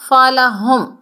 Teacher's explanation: فلہم ہم نے میم کو ظاہر کر کے پڑھنا ہے، اظہار شفوی کا قاعدہ ہے